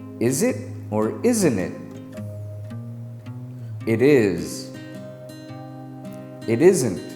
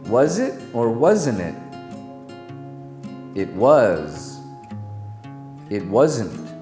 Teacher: z is a voiced sound it's just like making the s sound but you need your voice box to do it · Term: final z sound